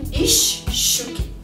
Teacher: также можем встретить на стыке предлога и слова Например из щуки из щуки но произносим ищ щуки то есть длинная ща получается